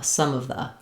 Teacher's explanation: So for example, rather than some of the, I would say some of the, some of the. So my M of some kind of links to my schwa of